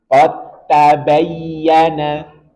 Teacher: Idzalamtum. Kemudian dal bertemu dengan ta. Sama makhraj berbeda sifat, maka langsung masukkan ke ta.